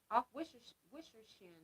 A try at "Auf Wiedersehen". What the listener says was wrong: Auf Wiedersehen. W's are V's, yeah. Auf Wiedersehen.